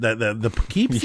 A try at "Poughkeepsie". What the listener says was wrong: really emphasizing the poo aspect. Poughkeepsie. I think people would pronounce it Poughkeepsie.